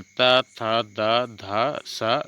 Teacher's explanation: जिन व्यंजनों के उच्चारण में जिह्वा की नोक ऊपरी दांतों का स्पर्श करती है दंत्य व्यंजन कहलाते हैं।